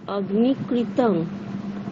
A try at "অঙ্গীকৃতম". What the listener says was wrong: অগ্নি নয় ময়ে গয়ে, তাহলে কি হবে? ওয়ে গয়ে দীর্ঘ।